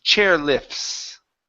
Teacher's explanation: don't pronounce that T. Okay, so it's going to be an F to an S.